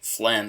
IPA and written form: flɛm (phlegm)